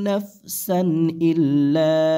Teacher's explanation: তানভীনের পরে হামজা থাকার কারণে এখানে স্পষ্ট করতে হবে কোন প্রকার গুন্না করা যাবে না